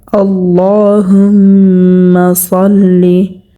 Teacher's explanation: এখানে যে সদটা আমরা দেখতে পাচ্ছি, সদটাকে মোটা করে পড়তে হবে, কারণ হচ্ছে সদ হচ্ছে মোটা হরফ।